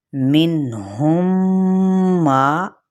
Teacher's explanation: تو اس کا قاعدہ کچھ ایسے ہے کہ میم ساکن کے بعد اگر میم متحرک آ جائے، پہلا میم ساکن اور اگلا میم متحرک، تو میم ساکن کو میم متحرک میں ادغام کر کے غنہ کے ساتھ ہم اسے ادا کریں گے